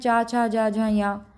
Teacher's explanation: च वर्ग में च, छ, ज, झ, य पांचों आ जाएंगे। इनका उच्चारण स्थान तालु है।